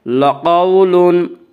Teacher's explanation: لقول، واولین، واولین وہ واو جو ساکن ہو، اس سے پہلے زبر ہو، واولین کو نرم آواز کے ساتھ جلدی پڑھیں گے